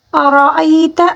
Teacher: را کے اوپر زبر ہے اس وجہ سے ہم نے را کو پر پڑھنا ہوگا